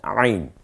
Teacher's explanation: এরপরে আমরা যে হরফটা দেখতে পাচ্ছি এটার নাম হচ্ছে আইন, গলায় চাপ দিয়ে আইন। আইন অলওয়েজ গলায় চাপ হবে আইনে